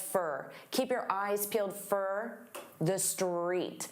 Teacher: And for also becomes very unstressed, fur.